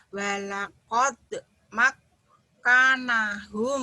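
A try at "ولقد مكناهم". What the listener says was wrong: Bukan, kanya pendek. Yang panjangnya yang naknya ini kan berdiri nih. Walaqad makkannahum. Walaqad makkannahum. Walaqad makkannahum. Walaqad makkannahum.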